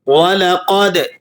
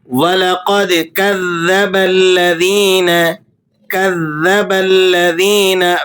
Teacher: دال پہ آپ نے قلقلہ ادا کرنا ہے، دال حروف قلقلہ میں سے ہے، یہاں ساکن ہے تو آپ یہاں قلقلہ ادا کریں گے۔